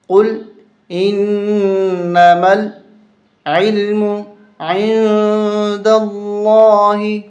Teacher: لفظ اللہ موٹا کر کے پڑھا جائے گا